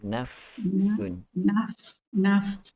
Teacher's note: Naf dia ada keluar angin sikit